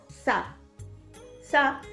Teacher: esa fricción del aire es dental y es muy sencilla porque es exactamente igual que en español